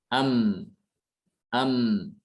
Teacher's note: Sementara mim suaranya tidak tertahan seperti suara ba. Am ya. Bukan enggak ya, sedikit mengalir.